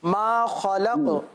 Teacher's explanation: آخر میں قاف حرف قلقلہ کا ہے, جب وقف میں اس کو ساکن کریں گے تو قلقلہ بھی ادا کریں گے